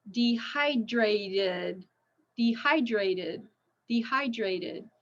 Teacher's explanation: to become dehydrated in this heat so that is Rule three it ends in a t sound so we have to have that extra syllable · See, it ends in a T, dehydrate. Ends in a T, so we need an extra syllable.